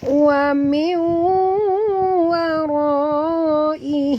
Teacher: nun mati bertemu dengan waw. Idgham al-gunah lagi ya, dengung dua harakat.